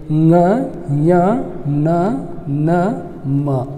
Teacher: ಕಂಠದೊಳಗೆ, ತಾಲವ್ಯದೊಳಗೆ, ಮೂರ್ಧನ್ಯದೊಳಗೆ, ಓಷ್ಠ್ಯದೊಳಗೆ ಅವುಗಳ ಜೊತೆಗೆ ಇವು ಮೂಗಿನ ಸಹಾಯದಿಂದ ಉಚ್ಚರಿಸಲ್ಪಡುವುದರಿಂದ ಏನಂತ ಕರಿತೀವಿ, ನಾಸಿಕ ಅಕ್ಷರಗಳು ಅಂತ ಕರಿತೀವಿ